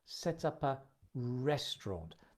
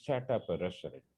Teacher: you can link set up, and also link the p and the a. Set up a restaurant.